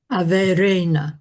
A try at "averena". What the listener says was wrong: That was perfect.